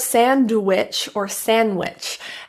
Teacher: The D can be so minimized that you don't hear it, or it can be fully pronounced